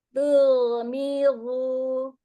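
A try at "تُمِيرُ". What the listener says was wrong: Diulang, hati-hati lidahnya jangan nyempil keluar.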